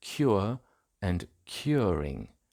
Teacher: Between vowels, the R is still pronounced as a so-called linking R